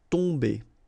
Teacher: Okay, so remember, you've got OM here, but after that you've got a consonant, so it does mean that this combination of OM will give you the sound on. Okay, you don't pronounce the M at all, so it's really a nasal, so it goes in your nose.